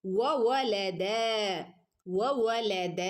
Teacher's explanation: അല്ലേ ഇത് ആംബ്യൊന്ന ചെയ്ത് ഓതണം ഓക്കെ മാലം വവലദ വവ വവ ഒക്കെ ചുണ്ട് സർക്കിളാക്കണം കേട്ടോ മലയാളത്തിൽ പറയുന്നത് പോലെ വ വ എന്ന് ഉച്ചരിക്കരുതേ